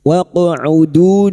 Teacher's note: huruf ain wastul halqi atau tengah tenggorokan